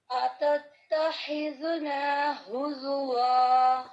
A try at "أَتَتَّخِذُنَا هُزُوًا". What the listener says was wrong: ٹھیک ہے، پریکٹس کرنی ہے، ابھی بھی تھوڑی کمی ہے. اتتخی خی خا خا خا کی آواز آنی چاہیے. ٹھیک ہے، جیسے خا خراش ہوتی نا، خراش خا یہ آواز آنی چاہیے. زیادہ خراش نہیں ہوتی اس میں، لیکن وہ پن ٹون آواز ہونی چاہیے خا کی. اس میں زیادہ ہمس نہیں ہوتا، ہمس ہوتا ہے لیکن اس طرح ہا کی طرح زیادہ نہیں ہوتا.